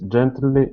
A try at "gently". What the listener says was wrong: Gently, and adding in a vowel sound there, saying gently. It's gently. Gently.